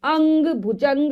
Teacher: तो सबसे पहले अनुस्वार जो कि एक बिंदु के रूप में रहता है, इसका उच्चारण नाक से होता है। नाक के माध्यम से, नाक से वायु निकलती है